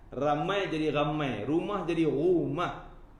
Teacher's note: orang Kedah ni huruf ra sebut ghain.